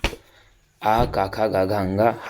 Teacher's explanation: आ का वर्ग का खा गा घा अंगा पूरा ले लेंगे और विसर्ग हा का उच्चारण स्थान कंठ होगा